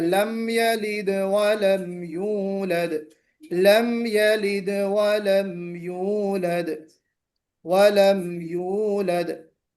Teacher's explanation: लम पर आवाज ठहरनी नहीं चाहिए बिल्कुल, लम यलिद नहीं, वरना यहाँ पे गुन्ना कहलाएगा।